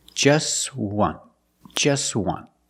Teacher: we see the t is between consonants so it's silent